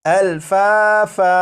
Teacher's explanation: جیسے یہاں پر آپ دیکھیں یہ جو لفظ ہے یہ ہے الفافن، یہاں پر فا کے اوپر دو زبر ہیں، تو جب یہاں پر وقف کریں گے تو دو زبر کو الف سے بدل دیں گے، اور یہ جو لفظ ہے الفافن، یہ الفافن نہیں پڑھا جائے گا بلکہ وقف میں یہ پڑھا جائے گا الفافا۔